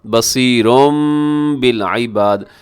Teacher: تنوین کو میم کے ساتھ بدل کے پڑھیں گے ہم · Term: اقلاب